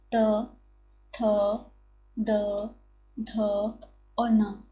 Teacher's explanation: त थ द ध और न, ये आ जाते हैं किसमें? तो दंत में ये पांचों वर्ण आ जाते हैं